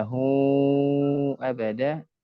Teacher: ya harusnya lahu abada panjangkan 4 harokat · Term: mad munfasil